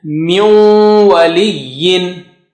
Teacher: So you are merging the Noon Sakina with Waw, with Ghunna.